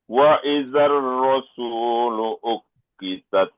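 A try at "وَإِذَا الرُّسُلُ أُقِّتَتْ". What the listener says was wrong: Oke, jangan panjang sunya. Taknya tambah lagi sedikit anginnya. Uqitat, tat, uqitat.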